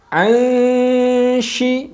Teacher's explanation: Nah, persiapan menyamarkan huruf nun bertemu dengan huruf shin. Jadi posisi lidah bersiap-siap untuk membacakan huruf shin di tengah lidah.